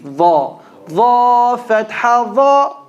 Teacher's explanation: Tip of the tongue between the top and bottom teeth.